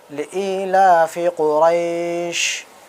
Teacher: بڑی شین کو بھی نکالنا ہے، سیٹی مار کے بولنا ہے